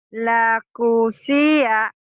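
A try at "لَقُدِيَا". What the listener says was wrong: Ini kalau nggak ada yang panjang, jangan ngegelik ya, Bu. Jangan. Laku dia. Karena ini pendek semua.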